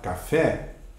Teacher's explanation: Então, na palavra, por exemplo, café, na palavra café, a sílaba que eu pronuncio com destaque é a última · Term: acento tônico